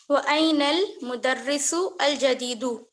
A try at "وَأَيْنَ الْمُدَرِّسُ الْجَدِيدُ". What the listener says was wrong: اس کو آپ بریک نہ کریں، کنٹینیوس پڑھیں.